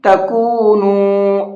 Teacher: کاف کو بھی کھینچیں گے اور نون کو بھی کھینچیں گے، اس لیے کہ یہاں واو ساکن سے پہلے بھی پیش ہے اور یہاں پر واو ساکن سے پہلے بھی پیش ہے، تو دونوں جگہ پر واو مدہ ہے، اس لیے دونوں کو کھینچ کر کے پڑھیں گے۔ · تَكُونُوا، اس طرح سے، اور زیادہ نہیں کھینچنا ہے، صرف 1 الف کے برابر کھینچ کر کے پڑھیں گے